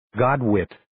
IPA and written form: 'gɑːdwɪt (Godwit)